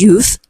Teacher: It is pronounced as oo sound. It's a long vowel sound.